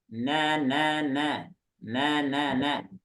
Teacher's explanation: Ujung lidah ketemu dengan gusi ya. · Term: nun